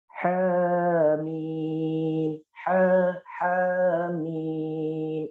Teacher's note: ha itu berada di tengah dari tenggorokan ini, dia satu makhraj dengan ain